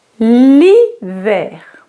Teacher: The H is not pronounced in French. Okay? There's L with an apostrophe because the word starts with the I sound.